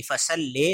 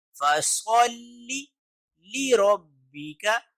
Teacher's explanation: لام کے نیچے زیر ہو تو اس کی آواز لی ہوگی، لے نہیں ہوگی. یعنی فصل لے اس کو نہیں پڑھیں گے بلکہ فصل لِرَبِّكَ وَانْحَرْ.